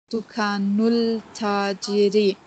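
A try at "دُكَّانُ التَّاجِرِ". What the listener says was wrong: Ta is Shamsir. Alif Lam is silent because Ta is Haruf Shamsi.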